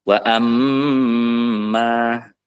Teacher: apabila mim sukun bertemu dengan mim yang dihukumi dengan Idam mutamilin itu perlu ditahan